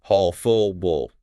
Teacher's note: See how the vowels shorten and blend into that dark L sound?